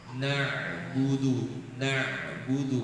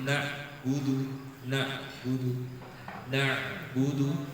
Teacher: suaranya setengah dialirkan atau tawasud tapi jangan putus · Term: huruf Ain